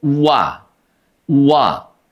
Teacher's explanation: wa itu diucapkan dengan indimamusyafatain ya. Memonyongkan kedua bibir.